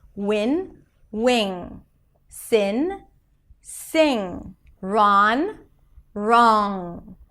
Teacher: In both cases, the air comes out through the nose.